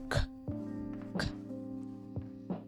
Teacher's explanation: the k sound is from the back of the throat